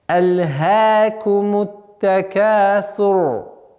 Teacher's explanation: Буква «ра» в данном случае огласовка аннулируется, переходит в сукун, и она произносится твердо, так как впереди стоящий звук с огласовкой «дамма».